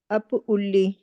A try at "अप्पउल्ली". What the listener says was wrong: अप्पउल्ली आधा प है वहां पर। अप्पउल्ली अप्पउल्ली